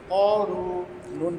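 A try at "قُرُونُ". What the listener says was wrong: ক টান আছে, করুনু।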